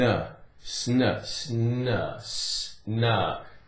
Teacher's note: Can you hear the S and the N blending together?